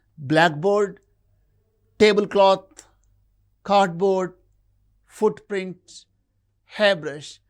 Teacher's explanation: Mostly the first element in the compound word receives the primary stress.